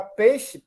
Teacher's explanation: eu acho que eu não pronuncio o i, né? Só jogar no aparelho aí, peixe, eu acabo pronunciando.